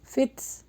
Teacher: تا کے اوپر جزم ہے، تھوڑا سا ہمس نکلے گا